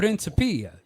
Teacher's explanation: so stress on the third syllable